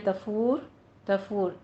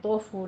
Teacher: وہی تفور، تفور تا باریک رکھنا ہے، توفور نہیں ہے، تفور، را پر پڑھنی ہے، تا کو باریک رکھنا ہے